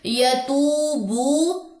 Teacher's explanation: ثم لم یتو، واو مد، بو واو مد، دونوں کو 2 کاؤنٹس لمبا کریں